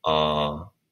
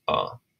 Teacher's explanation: twice as long as the short vowel so ah versus ah um maybe slight exaggeration how long i